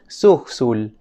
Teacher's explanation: En fonética se le conoce como sibilante alveolar sorda.